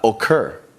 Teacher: the stress is on the end of the word